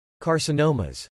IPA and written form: kɑɹsənowməz (Carcinomas)